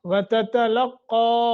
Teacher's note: قاف کو موٹا اور تھوڑا سا مد کرنی ہے